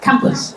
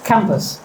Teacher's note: So this word is it has two parts cam and puss. So out of two only one is spoken loudly. Which one? The first one. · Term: word stress